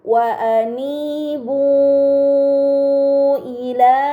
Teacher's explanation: Ini dinamakan mad munfasil. Dibaca panjang selama 4 atau 5 harokat